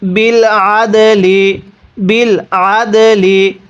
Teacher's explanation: দালের উপর সাকিন হলে দালটিকে কলকলা করে পড়তে হবে।